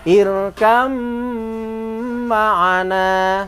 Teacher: Kenapa ba kok tidak dibaca? Karena suaranya ba ini sudah masuk pada mim.